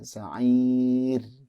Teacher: sa'irnya itu roknya tipis karena didahului oleh kasroh. Jadi jangan sa'ir, ya, sa'ir tipis.